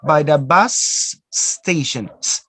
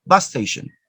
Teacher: when you have two consonants they are the same so you just pronounce one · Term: gemination